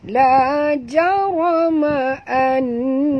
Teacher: nun bertasydid, wajib dengung ya, wajib al-gunah ya, dua harakat